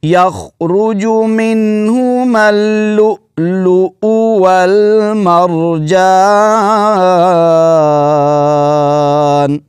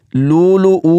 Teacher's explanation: حمزہ کے اوپر جو پیش ہے اس کو لمبا بھی نہیں کرنا، اور پچھلے حمزہ کو جھٹکے کے ساتھ پڑھنا ہے۔